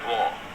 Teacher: The R is not heard because it is dropped.